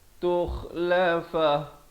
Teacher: kha di hujung kerongkong